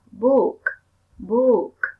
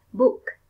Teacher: Đấy là em cần nói được bật âm k ở cuối.